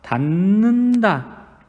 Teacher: 디귿에 해당하는 소리가 니은으로 바뀌었죠. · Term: 비음화